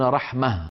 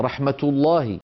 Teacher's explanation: وأغلب العرب في زمن النبوة يعاملون هذه الهاء في الوصل تاء، فيقولون مثلا رحمة الله، وإذا وقفوا يقولون رحمة، ففي الوقف يحولونها إلى هاء وفي الوصل ينطقونها تاء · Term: هاء التأنيث